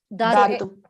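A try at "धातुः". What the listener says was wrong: Dhatuhu. You have to say the Visargaha there. Dhatuhu iti vaktavyam.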